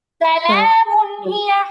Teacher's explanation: সালামুন, তানমিনের পরে হা আছে, ইজহার স্পষ্ট করে পড়তে হবে।